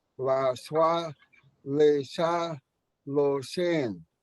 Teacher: But you'll notice at those three, la, swa, le, sa, lo, sin, that the emphasis was put on the last syllable